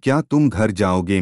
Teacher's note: जाओगे का उच्चारण कुछ ऊंचे सुर में होता है